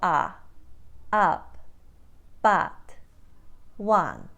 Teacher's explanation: becomes a wider ah in the Ukraine accent